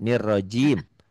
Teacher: Jangan nirrazim. J-nya Jakarta keras.